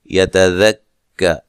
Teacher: کاف کو باریک پڑھنا ہے، اور را کو موٹا ادا کریں گے